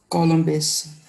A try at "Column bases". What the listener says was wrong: Column basis. S को खा गए आप?